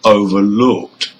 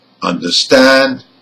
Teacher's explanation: Now, the stress on these compound verbs are on the second part of the word. The stress is on stand in number 1 and looked in number 2.